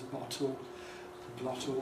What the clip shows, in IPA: ˡbɒto